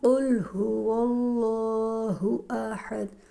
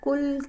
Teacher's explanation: ان دونوں حروف کو پڑھتے ہوئے بہت فرق رکھنا پڑتا ہے۔ قاف موٹا پڑھا جاتا ہے اور کاف باریک پڑھتے ہیں · زبان کی جڑ جب کوے کے قریب نرم تالو سے لگے تو اس سے قاف ادا ہوتا ہے